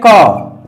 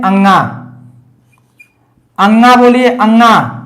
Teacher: क में झंकार नहीं होगा, अंगा में झंकार होगा